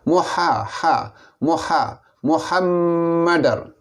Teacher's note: ha ini makhrajnya di pertengahan halqum